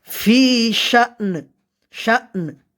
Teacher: হামজা উচ্চারণ করতে হবে আমাদের, আবার নুনের উপর ওয়াকফ করার কারণে নুনের উপরও সাকিন হয়েছে, আমাদের নুনটা কি করতে হবে, উচ্চারণ করতে হবে, দুটোই একসাথে।